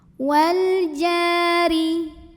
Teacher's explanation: Ja mad tabi'i zahiri karena ada alif didahului baris fathah. Maka jimnya panjangkan 2 harokat. Wal jari. Huruf ra dibunyikan secara tarqiq sebab barisnya di bawah kasrah.